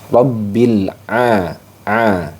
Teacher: Ain Ini masuknya ke ee wastul halq jadi makhrajnya di wastul halq